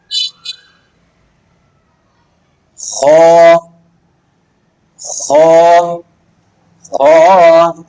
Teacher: حرف خواہ مخرج حلق کے اوپر کا حصہ جو منہ کی طرف ہے، اس سے یہ حرف ادا ہوتا ہے۔